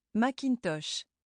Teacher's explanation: A French person stresses each part of the word equally.